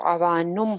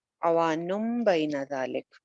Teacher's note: अब यहाँ पे नुन था, वैसे तो तनवीन थी, नून दो पेश नुन था, लेकिन क्या हुआ, तनवीन के बाद आगे बा आ गई है। जब तनवीन के बाद बा आ जाती है तो फिर क्या होता है कि नून की आवाज मीम में चेंज हो जाती है